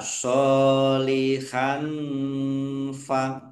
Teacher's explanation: Fathah tanwin bertemu dengan huruf fa bacaan ikhfa dibaca samar-samar.